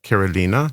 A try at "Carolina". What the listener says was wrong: The first A is different. It's Carolina. Carolina.